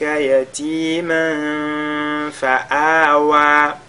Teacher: tanwin suivi de la lettre fa on fait al-ikhfa